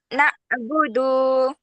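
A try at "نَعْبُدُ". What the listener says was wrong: না, হলকের মধ্যখান থেকে কণ্ঠকে একটু চাপাইতে হবে, হুম? হলকে শুরুর মতো শোনা যাচ্ছে, মাঝখানে একটু চাপিয়ে।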